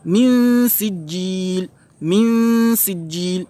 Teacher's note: Donc vous voyez, je commence avec Runa, je dissimule le nun et je passe dans la lettre qui suit